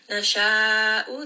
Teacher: Nasha'u, this is a 4-count mad. This one is mad wajib muttasil because it's found within that same word. Pull this for 4 counts.